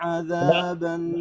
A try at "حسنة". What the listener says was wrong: استعجلت على الغنة. حسنة